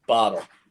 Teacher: you don't have a glottal stop on your teas like me